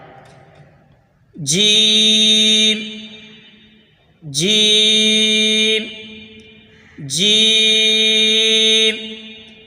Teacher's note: زبان کے درمیان اور اوپر کے تالو کے درمیان سے ادا ہوتا ہے